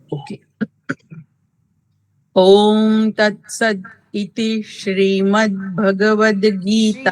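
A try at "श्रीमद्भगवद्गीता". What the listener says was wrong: શ્રીમદ, શ્રી દીર્ઘ છે ને?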